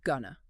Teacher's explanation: It reduces to gonna. 2 syllables, blended vowel sound.